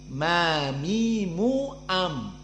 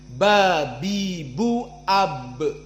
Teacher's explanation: Kilahuma sawa, makhraj as-syafah, maka bedanya hanya mim aqallu intibaqan minal ba. Ba lebih kuat penekanannya.